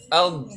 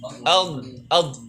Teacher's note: kalau dalam kondisi sukun dia punya sifat istitolah, dorongan lidah dari belakang sampai ke depan.